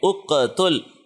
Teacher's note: مثال کے طور پہ اقتل، تو اق، کی ساؤنڈ آخر میں آئی ہے، یہ اقتل، یہاں پہ ہم نے قوف پہ قلقلہ کیا